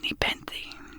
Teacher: The word is pronounced nepenthe, with the stress on the second syllable.